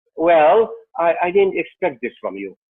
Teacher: we use a flat tone, and maybe a falling tone